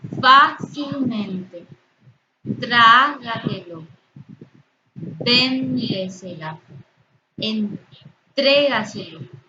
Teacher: Todas estas palabras son esdrújulas. Su sílaba tónica se encuentra en la sílaba anterior a la antepenúltima sílaba. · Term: sobreesdrújulas